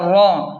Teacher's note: را کو موٹا پڑھیں کیونکہ را پر زبر ہے